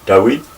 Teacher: The emphasis goes on the last syllable, Dawid